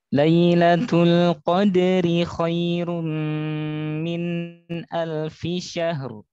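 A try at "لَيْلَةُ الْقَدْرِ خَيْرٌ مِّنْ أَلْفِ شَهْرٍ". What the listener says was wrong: Syahr. Jadi rohnya disempurnakan dulu. Min alfi syahr. Min alfi syahr.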